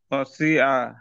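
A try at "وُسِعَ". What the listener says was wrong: উসিয়া, ও পেশ উ।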